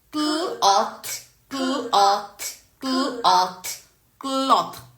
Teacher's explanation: In consonant blend, you can hear the individual sounds clearly. So, in cloth, in cl, you can hear k and l, both the sounds. Kl and t is a digraph.